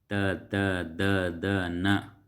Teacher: ದಂತಾಕ್ಷರಗಳು ಅನ್ನುವಂಥದ್ದು ಕೂಡ ಬರ್ತಾವೆ ಹಲ್ಲುಗಳ ಮೂಲಕ